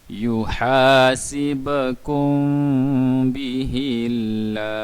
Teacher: Mim apabila bertanda sukun selepasnya huruf ba, kita kena dengung 2 harakat.